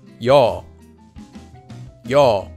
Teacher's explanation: You can think of this sound as a combination of the vowel e with the vowel o said quickly